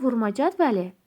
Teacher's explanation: Vurma cədvəli mənasında vurğu sona düşür.